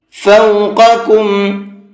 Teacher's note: بڑے قاف کو پر کر کے پڑھیں گے اور چھوٹا کاف کو نارملی باریک کر کے پڑھیں گے۔